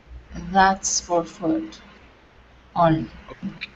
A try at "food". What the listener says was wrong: Okay, now instead of saying foot, it's food. Okay, only one vowel sound. Food.